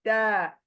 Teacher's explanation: हमारी जुबान क्या हो रही है चौड़ी हो रही है ब्रॉड चौड़ी हो रही है और ऊपर के सामने के दातों की जड़ को लग रही है